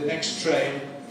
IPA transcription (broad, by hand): ˌneks ˈtreɪn